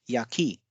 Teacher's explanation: So here you can see Ya has a low pitch and ki has a high pitch